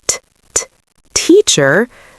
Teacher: There's no buzzing at all. It just feels like air is escaping from my mouth. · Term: unvoiced consonant sounds